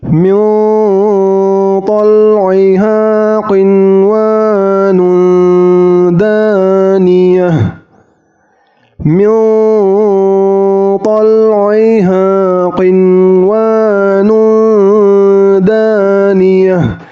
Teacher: Jadi nun sukunnya harus jelas dan wawunya juga harus jelas, tidak didengungkan.